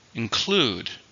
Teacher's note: include two stress on the second syllable